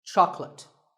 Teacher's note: make sure that there are only 2 syllables. Choc and let. Chocolate. And remember, there's no late in chocolate.